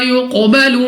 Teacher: قاف مستعلیہ میں سے ہے، موٹا پڑھیں گے منہ اور آواز کو کھول کر۔